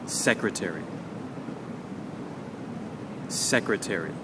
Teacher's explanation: with secretary, the stress or the emphasis will happen on the first syllable.